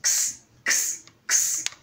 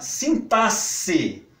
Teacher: com X com som de sibilante, surda, que é esse aqui que eu estou fazendo. Essa é a sibilante surda.